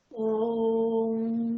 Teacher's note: जिसके उच्चारण में दीर्घ स्वर से भी अधिक समय लगता है, उसे प्लुप्त स्वर कहते हैं।